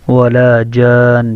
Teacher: اور نون مشدد ہے. نون مشدد ہونے کی وجہ سے جیم کو نون میں ملا کر اس میں غنہ کریں گے · جیم کے آگے جو الف ہے اس الف کے اوپر مد ہونے کی وجہ سے اس کو 4 یا 5 الف لمبا کریں گے. اور نون مشدد ہے.